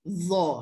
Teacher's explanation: Meletakkan hujung lidah di antara hujung gigi kacip dan belakang lidah diangkat.